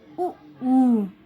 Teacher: इसे बोल के देखिए, ऊ ऊ, तो ओठ एकदम से चिपक रहे ना, एकदम से मुड़ रहे हैं, एकदम सिकुड़ जाते हैं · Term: ओष्ठ